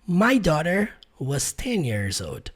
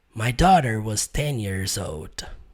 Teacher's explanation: Aqui no caso, quando ele fala my daughter was 10 years old, você não vai ver ele pronunciando a palavra, a letra D na palavra old